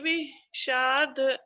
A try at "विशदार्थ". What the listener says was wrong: विशदार्थ, विशदार्थ, विशदार्थ नहीं, विश दा भी है ना, तो विशदार्थ।